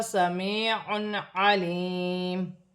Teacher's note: یا ساکن سے پہلے زیر یا مدہ بنے گی، 1 الف کی مقدار کھینچ کر پڑھا جائے گا۔ 2 پیش کی تنوین کے بعد عین آ رہی ہے، عین حروف حلقی میں سے ہے، تنوین میں غنہ نہیں ہوگا۔